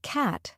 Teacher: the word cat has a broader a sound compared to British English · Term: American accent